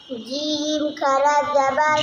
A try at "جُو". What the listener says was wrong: जीम, देखा नाम नहीं खींचा ना आपने, नाम खींचने वाला रफ है जीम।